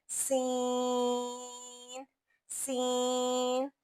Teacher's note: اب سمجھیں، سواد میں تفخیم ہے یعنی موٹاپا، زا میں جہر ہے یعنی کہ تھوڑی سختی، اور سین میں ہمس ہے یعنی سانس کی آواز باہر نکلتی ہے،